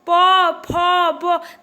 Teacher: जब आप प, फ, ब बोल रहे हैं तो आपके ओठ इसमें आपस में चिपक रहे हैं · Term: ओष्ठ